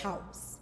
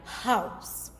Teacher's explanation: The letter H in English is a voiceless glottal fricative, which allows a breathy airflow when an English speaker is speaking. So to know that this voiceless glottal fricative, you would place your hand in front of your mouth and pronounce a letter H word.